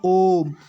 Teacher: इनके उच्चारण में तीन मात्रा का समय लगता है जिसे हम प्लुत स्वर या त्रि मात्रिक स्वर कहते हैं